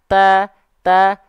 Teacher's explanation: ketika melafalkan ta berharakat di awal ta ta kurang kerasa ya percikan nafasnya